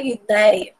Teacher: é um caso de ditongo esse ditongo é aberto não são fechado ele não tá saindo pelo nariz por exemplo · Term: som aberto